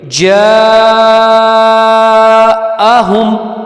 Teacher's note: جیم پہ مدہ آ گئی تو اس کو 3 سے 5 الف کے برابر لمبا ہم کر کے پڑھیں گے